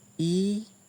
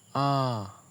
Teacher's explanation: E is high in front, ah is low in back.